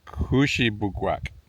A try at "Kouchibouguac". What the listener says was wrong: Kouchibouguac. Yes, but put an accent on the first syllable. Kouchibouguac.